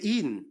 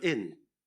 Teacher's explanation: in Saint Lucian speech, we tend to select tense vowels where a lot of other speakers select lax vowels